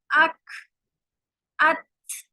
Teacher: शिद्दा का मतलब होता है पहले आवाज बंद होगी फिर हम्स शामिल होगा। तभी तो आवाज जब हम टकराती है ना, आवाज जब खत्म हो जाती है टकरा के, तब उसके अंदर हम्स अक अत, यानी पहले आवाज मखरज से टकराती है फिर हम शामिल होता है।